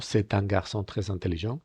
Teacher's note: Veis que la T, entra en contacto con la siguiente vocal